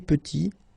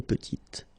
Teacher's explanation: Final T is not pronounced, and then when you add this E at the end, you get the sound T